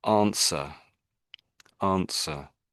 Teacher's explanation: we just don't really pronounce the W. So this word here, we say it as answer, answer.